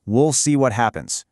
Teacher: In American English, you'll hear will get shortened to sound more like wool.